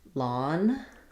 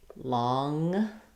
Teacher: And for the difference between the n and the ng, for the n, my tongue is lifting behind my teeth. For the ng, it's lifting in the middle of the palate.